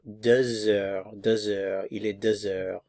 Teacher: There's liaison here between the X and the vowel. The H is silent.